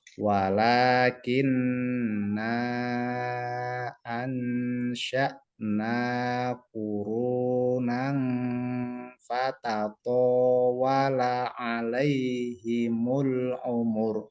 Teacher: panjangnya itu 2 alif atau 4 harokat karena setelah na itu ada hamzah. Ada hamzah berarti kan kalau tajwidnya itu bacaan mad jaiz mufasil.